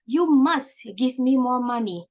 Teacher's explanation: the must has a little bit of push on their pronunciation to give the emphasis on the word